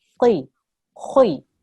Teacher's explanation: Even if it's got a kasra underneath, this qaf has a kasra underneath, you still have to make your mouth into a round shape and produce a thick sound. Qi, khui. Okay, you're not going to smile and say these letters, you have to have a round mouth, right?